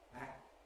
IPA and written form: æk̚- (actor)